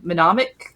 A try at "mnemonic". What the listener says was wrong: Nope. Don't say the first M. Mnemonic.